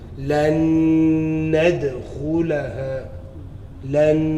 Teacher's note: That's a noon with another noon. So you're reading one noon.